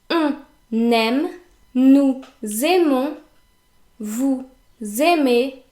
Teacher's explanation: In other words, you have to pronounce the N and you have to pronounce the S as if it were a Z, because we have to make the liaison between the two words.